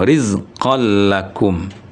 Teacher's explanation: Rumusnya sesudah nun sukun atau sesudah baris dua ada huruf yang delapan salah satu. Kebetulan ini ada lam rizqon itu digabung ke huruf lam bacanya rizqol · Karena untuk lam dan ro tidak dengung.